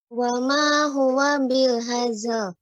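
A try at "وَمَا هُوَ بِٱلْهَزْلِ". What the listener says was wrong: Hazl. Ya, jadi zainya lebih banyak lagi pengucapannya hazl.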